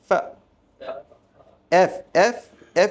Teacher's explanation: উপরের শাড়ির দাঁতের অগ্রভাগ এবং নিচের ঠোঁটের নিচের ঠোঁটের পেটের ভেজা অংশে স্পর্শ করে উচ্চারিত হয় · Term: এফ এর উচ্চারণ